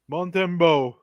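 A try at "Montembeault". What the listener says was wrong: When you have an E after the T in French, you say the T. When it's just a T, a lot of times you don't pronounce it.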